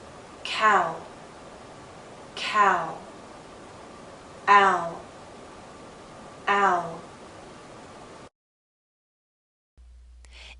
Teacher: So our lips are moving in to a circle. Not a tight one as in ooh, but approaching that. · we're using a slight W sound, w, to make this glide possible. The ow is often spelled as OW or OU.